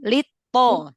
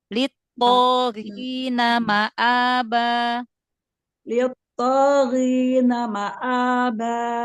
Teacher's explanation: to itu dia punya sifat jahar, tertahan nafas, syiddah, tertahan suara, ya. Jadi jangan ada aliran suaranya, langsung litto, litto, ya.